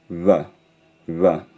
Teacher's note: And it's normally realised as something like a bilabial fricative, like a V, but made with both lips pressed together instead of one lip against one set of teeth